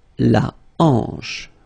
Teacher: H here is not pronounced, so you get the sound en, hanche at the beginning